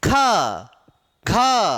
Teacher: साथ हथेली पर आपकी वायु देते हुए हो रहा है यानी वायु का प्रभाव झटका के साथ तेजी से बाहर ए रहा है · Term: महाप्राण